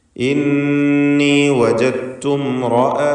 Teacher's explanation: ഇന്നി ഇവിടെ നൂൻ മുഷദ്ദദ ഷദ്ദുള്ള നൂനിനെ മണിക്കുക. വജത്തു ഇതിലുള്ള ദാലിൻ്റെ സുക്കൂൻ പൂർണ്ണമായും തായിലേക്ക് ദാലിനെ ലയിപ്പിച്ച് ഉച്ചരിക്കുകയാണ്.